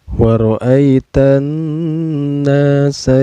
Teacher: Ro-nya ini dihukumi tafkhim atau tebal karena ro di sini berbaris patah ya.